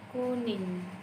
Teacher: konsonan nga yang merupakan konsonan nasal velar bersuara. Konsonan ini dilambangkan dengan deret huruf N dan G.